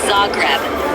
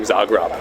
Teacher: It's pronounced Zagreb with the emphasis on the first syllable.